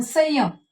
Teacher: संयम य वर, म्हणजे इथं य हे अक्षर काय झालंय, अनुनासिक झाले. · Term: अर्ध अनुनासिक